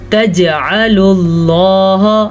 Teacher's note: जीम के ऊपर कलकला हो रहा है क्योंकि जीम के ऊपर साकिन है · लफ्ज़ अल्लाह को हमने पुर पढ़ा है, लफ्ज़ अल्लाह से पीछे वाले हर्फ के ऊपर पेश है इसीलिए